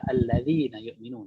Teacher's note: Perhatikan huruf zal itu jangan berikan itbaq ya. Zal enggak bisa itbaq. Istifal infitah ya. Alladzi jangan dhi tapi alladzi infitah aja.